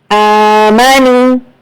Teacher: یہاں پر واو مدہ ہے، یہاں پر بھی آپ کو 2 حرکت کھینچ کر پڑھنا ہے